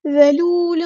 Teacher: بقرۃ اللہ ذلول، ذال یہ لفظ ذال ہے، زا نہیں ہے، ٹھیک ہے، اس کو سختی سے ادا نہیں کرنا، ذال نرمی سے ادا کرنا ہے، باریک لیٹر ہے